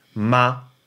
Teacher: ma in the neutral tone okay that's the neutral tone remember that's just kind of a middle tone it's not a first tone it's not a second third or fourth